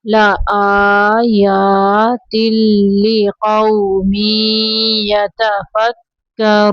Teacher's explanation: دونوں لفظوں پہ کھڑی زبر ہے 2 سیکنڈ تک لمبا کریں گے دونوں کو برابر